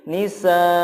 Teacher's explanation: Begitupun kata nisaan, ketika waqaf menjadi nisaa, a-nya dibaca panjang. Walaupun di sana tidak ada alifnya, tetap dibaca panjang 2 harokat. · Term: mad iwad